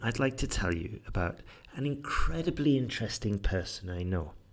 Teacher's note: I went up there and I stressed the incredibly interesting